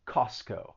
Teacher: a lision is when certain sounds or syllables are removed so in this case the t is removed